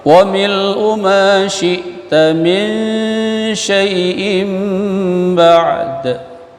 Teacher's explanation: min nun mati jumpa dengan shin ikhfa dengung